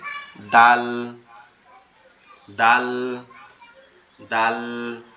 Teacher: জিহ্বার আগাটা উপরের দুই দাঁতের গোড়ার সঙ্গে লাগবে